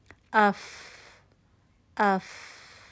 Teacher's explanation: अपने मुंह के आगे अपना हाथ रखिए। अफ अफ हवा का चलना महसूस होता है। हम्स की क्वालिटी है फ के अंदर।